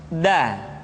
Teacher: Da diucapkan dengan menyentuhkan ujung lidah kita dengan bagian gusi-gusi dua gigi seri bagian atas. Da. Nah, kesalahan yang sering dilakukan adalah menyentuhkan ujung lidah dengan langit-langit. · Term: huruf da